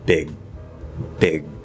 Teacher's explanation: at the end of a word, if you have the stop sound and it doesn't connect or anything, it will commonly stop, a held stop, glottal stop